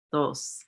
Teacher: there's not a clear unvoiced th, but more of the voiced th often, and it's with the letter D, dos.